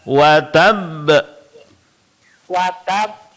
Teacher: sedikit diberikan tekanan pada qalqalahnya karena dia qalqalah kubra ya. Berhenti pada huruf qalqalah yang bertasydid.